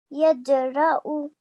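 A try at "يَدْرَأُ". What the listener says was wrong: Brilliant. Well done, mashallah. Really nicely read.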